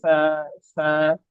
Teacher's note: جیسے سانس نکلتا ہے نا ایسے آواز سانس کی جیسے آواز ہوتی ہے اس طرح کر کے آواز جاری لگے یہ والی نرمی کے ساتھ.